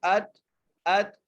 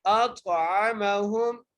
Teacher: کے پڑھنا ہے، الذی اطعمہم، حمزہ کو طا سے ملانا ہے، طا حرف قلقلہ میں سے ہے، اور طا کو موٹا کر کے بھی پڑھنا ہے